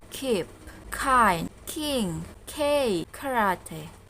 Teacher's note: the air that comes out from the lung is completely blocked by the back part of the tongue touching the Vellum